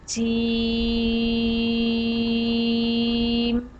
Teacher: जब हमारी ज़ुबान का दरमियानी हिस्सा, जब हमारे ज़ुबान का जो दरमियान से हिस्सा है ऊपर वो तालु, ये जो मुंह के ऊपर जो जगह होती है उसे हम बोलते हैं तालु। جب ہماری زبان کا درمیان اوپر تالو کے درمیان میں لگے گا تو جیم ادا ہوگا. جیم کو ہم 5 الف کے برابر لمبا کرتے ہیں.